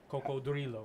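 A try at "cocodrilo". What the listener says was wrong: you just put a little bit more roll on the yard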